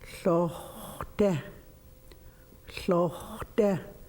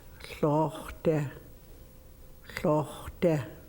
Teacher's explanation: The O is not O or ah, it's O. It's between there. There's no English sound like it.